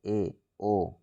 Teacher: अर्ध संवृत कौन है जिन स्वरों के उच्चारण में मुख द्वार आधा बंद रहता है